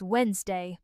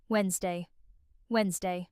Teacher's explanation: The middle NS sound is very quick and light, almost like the letter N is sliding directly into Z.